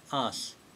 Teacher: usually Japanese don't pronounce the u part of su so much. So it sounds like us, which is nice.